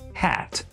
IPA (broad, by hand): hæt